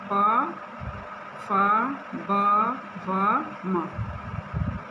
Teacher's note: प बोलने पे हमारे दोनों ओठ जो हैं आपस में चिपक जाएंगे, इसलिए इनका उच्चारण स्थान ओष्ठ है। · बिना दोनों ओठ को चिपकाए हुए हम इसमें का एक भी वर्ण नहीं बोल पाएंगे।